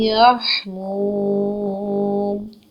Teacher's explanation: یا کے اوپر ایک حرکت ہے، ہا ساکن کے ساتھ ملا کے ادا کریں گے. میم پیش واو منہ ہے، اس کو ہم دو حرکت لمبا کریں گے، لیکن جب ہم وقف کریں گے یہاں پر وقف کی صورت میں ہم 2 سے 6 حرکت لے کے جا سکتے ہیں لمبا، تاکہ ہماری تلاوت قرآن پاک میں حسن پیدا ہو، خوبصورتی پیدا ہو.